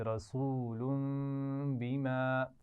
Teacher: رسول تنوین کے بعد با گیا ہے تو میم سے بھی بدلیں گے اور غنہ بھی کریں گے